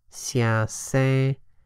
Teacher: The first character is spoken as xia on its own, however it changes when it is not the last syllable. Xia se. Notice that the second syllable is higher. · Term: tone sandhi